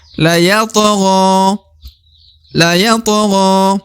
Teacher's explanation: huruf to berada di tengah, to sukun atau to mati ya. Harus dibaca pantul ya.